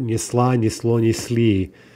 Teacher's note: when we add our vowel markers, our feminine marker, our plural marker, and so forth, the L does reappear